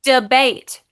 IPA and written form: dəbate (debate)